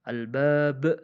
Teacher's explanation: Qalqalah adalah memantulkan huruf itu sendiri, yaitu ba.